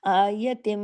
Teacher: मीम पे जब तशदीद हो बड़ा गुना होता है। अकमल आयतम आवाज नाक में चुबती है देर तक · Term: बड़ा गुन्ना